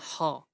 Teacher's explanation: হ শুধুমাত্র কণ্ঠ দিয়ে বের হয়, কোথাও বাধা পায় না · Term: কণ্ঠনালীয়, কন্ঠনালীয়